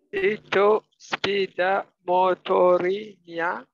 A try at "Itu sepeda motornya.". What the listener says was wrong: Can you say motornya? Not motorinya, but motornya.